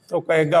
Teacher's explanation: महाप्राण ध्वनियों का उच्चारण उनके अमहाप्राण रूप में किया जाता है।